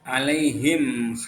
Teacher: izhar itu artinya apa jelas dan syafawi itu artinya bibir jadi cara membacanya terang di bibir dengan mulut tertutup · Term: izhar syafawi